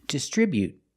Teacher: You don't have to release the t. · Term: stop t